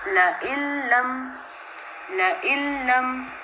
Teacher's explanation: अब लइल्लम में हम हमज़ा को लाम के साथ मिला रहे हैं, इदगाम कर रहे हैं, लेकिन यहाँ पर गुन्ना नहीं कर रहे, ठीक है। तो हम यहाँ पे बग़ैर गुन्ने के इदगाम करेंगे। कैसे, लइल्लम, लइल्लम, लाम 2 दफ़ा है तो उसका थोड़ा सा हमने टाइम लगाना है उसके ऊपर, ठीक है जी। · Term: इदगाम बिला गुन्ना